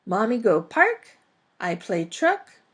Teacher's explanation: they start using statements but make them into questions by going up in intonation at the end